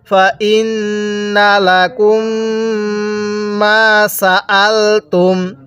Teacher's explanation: নুনের মধ্যে গুনাহ করব কারণ মিমে নুনে তাসদিদ গুনাহ করা ওয়াজিব। মিম এবং নুনের উপর তাসদিদ হলে সেগুলো গুনাহ করা ওয়াজিব।